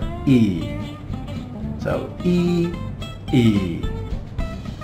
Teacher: it's similar to the Vietnamese sound E but it's a little bit lower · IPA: /i:/